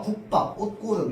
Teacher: 그러니까 음절 끝소리 규칙에 의해서 기역, 디귿, 비읍으로 받침이 나오고 나서 그 뒤에 나오는 예사 소리는 전부 된 소리가 일어납니다.